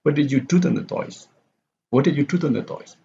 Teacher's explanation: So toys here is not stress.